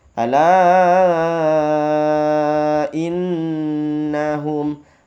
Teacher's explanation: ala dipanjangkan 5 harokat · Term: mad jaiz munfasil